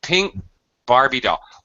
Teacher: I've got this glottal stop, but I'm not breathing out. I'm not using my aspiration